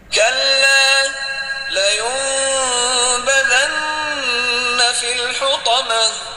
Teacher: Pada ayat keempat ini terdapat hukum iklab, yaitu nun sukun bertemu dengan huruf ba, dibaca mendengung, membentuk huruf mim